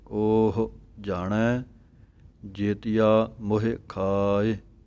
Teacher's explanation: ਊੜੇ ਦੇ ਉੱਪਰੋਂ ਖੁੱਲ੍ਹਾ ਹੈ ਮੂੰਹ, ਇਸ ਕਰਕੇ ਇਹਦੀ ਆਵਾਜ਼ ਜ਼ਿਆਦਾ ਦੇਣੀ ਹੈ ਉੱਪਰ ਨੂੰ। ਉਹ ਹਾਹੇ ਔਂਕੜ ਥੋੜ੍ਹੀ ਜਿਹੀ ਦੇਣੀ ਹੈ, ਲਘੂ ਮਾਤਰਾ ਹੈ